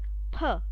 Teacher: P is unvoiced. This means when I'm pronouncing the letter P, vocal cords, they are not vibrating. You can keep your hand on the vocal cord, just touch your vocal cord and try and pronounce the letter P.